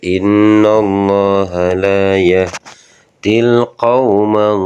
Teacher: Di sini ada alif lam. Alif lamnya ternyata terbaca jelas, makanya dinamakan alif lam qamariyah atau idhar qamariyah